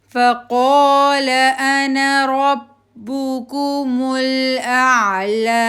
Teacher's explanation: با کے اوپر پیش ہے ہونٹ راؤنڈنگ، کاف کے اوپر پیش راؤنڈ ہی رہیں گے، میم کے اوپر پیش راؤنڈ